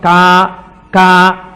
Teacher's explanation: కే అన్న దాంట్లో కా కా పలకాలంటే ఎక్కడ పలకాలి? కంఠం దగ్గర పలకాలి.